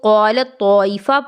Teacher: قالت میں، اس تا کو طا سے بدل دیا جائے گا اور دونوں تا کو ایک ساتھ ملا دیا جائے گا ، ادغام کر دیا جائے گا، جیسا کہ یہاں آپ دیکھ · پہلا حرف جو ہے وہ تا ساکن ہے، دوسرا حرف جو ہے وہ طا متحرکہ ہے، اور ان دونوں کا مخرج ایک ہی ہے